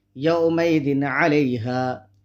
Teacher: رال کے نیچے 2 زبر 2 زیر کی تنوین ہے، تنوین کے بعد حروف حلقی کے 6 حرفوں میں سے عین ہے، اس لیے تنوین کی آواز کو ظاہر کر کے بلا غنہ جلد پڑھیں گے